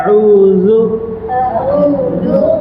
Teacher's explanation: நாக்கினுடைய நுனி நுனி அதை லேசா கடிச்ச மாதிரி சொன்னா என்ன செஞ்சிரும் அந்த தால் வந்துரும்